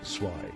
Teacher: The Z in German makes a TS sound like the end of the word cats, so zwei sounds like TSVI.